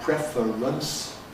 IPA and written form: ˈprefərəns (preference)